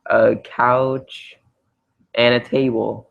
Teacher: I usually don't pronounce the d that much